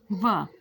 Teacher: जब भी आप व बोलते हैं तो आपके जो जीभ है, दांत और होठ आपस में मिलते हैं, व, इसी कारण से इसका उच्चारण स्थान क्या है? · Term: दंतोष्ठ